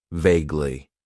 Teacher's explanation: It has 2 syllables, and the stress is on that first syllable.